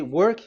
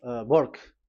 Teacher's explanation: they changed the W into a B